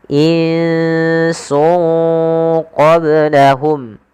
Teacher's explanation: satunya Sin dan qf maka dia harus dibaca dengan bacaan Ikhfa cara membacanya itu menyamarkan suara tanwinnya atau suara nunnya ke huruf setelahnya maka Nun yang di sini kita sarkan ke huruf Sin sungnya